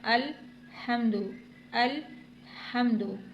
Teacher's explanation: ال ٹھہرا کر پڑھنا ہے، قلقلہ نہیں کرنا